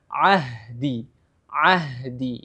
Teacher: huruf Ha ini berada makhrajnya berada di tenggorokan bagian bawah ya ain ada tenggorokan bagian atas sedangkan huruf ha ber tenggorokan bagian bawah jadi cara bacanya Ahdi · Huruf ha ini makhrajnya berada di tenggorokan bagian bawah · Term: perpaduan antara dua huruf tenggorokan